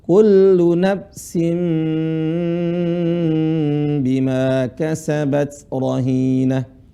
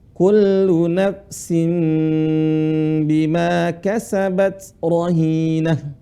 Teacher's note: di sisinya ada mim kecil menunjukkan apa suara seharusnya Kullu nafsin suara tanwin berubah menjadi mim Kullu nafsin Bima kasabat rohinah mulutnya dirapatin klu nafsin Bima kasabat